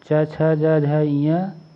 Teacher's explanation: च, छ, ज, झ, इया तालव्य व्यंजन ऑप्शन बी कहलाते हैं। चा वर्ग के सभी व्यंजनों का उच्चारण तालु कठोर तालु के स्पर्श से होता है, इसलिए इन्हें तालव्य व्यंजन कहते हैं।